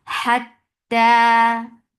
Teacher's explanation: Ta will get sifa of shidda. There will be no flow of sound, and then ta, two counts long.